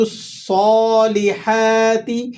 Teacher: صاد کو آپ نے موٹا کر کے ادا کرنا ہے